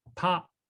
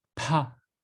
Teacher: So the first one is short and high, pa. And then the second one is the breathy twin, pa.